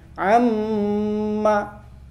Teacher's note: Huruf mim itu bibir bagian bawah bertemu bibir atas bagian luar. Jadi kalau bedanya dengan ba, kalau ba itu bibir bagian dalam, kalau mim bagian luar.